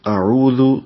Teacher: اعوذ حمزہ جلدی سے پڑھیں گے، عین وسط حلق سے، واو ہونٹوں کی گولائی سے، دال کو نرمی سے پڑھیں گے، زبان کی نوک اوپر والے سامنے کے دانتوں کے اندرونی کناروں سے لگائیں گے۔